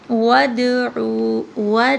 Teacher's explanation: دال پہ قلقلہ آئے گا